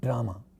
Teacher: When we say English word drama, we are using our d, which is a retroflex sound, and this is precisely because of the interference of the conditioning of vocal tract.